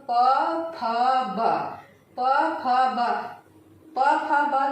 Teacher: ओठों के टकराने से जिनका उच्चारण होता है वह क्या कहलाते हैं, ओष्ठ्य कहलाते हैं।